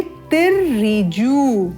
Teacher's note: देवा नाम भद्रा सुमतिर्रिजु, यहाँ ध्यान देंगे, हाइलाइटेड है तिर्रिजु, इसको ध्यान देते हुए बोलेंगे तिर्रिजु। ज में ऊ का दीर्घ स्वर है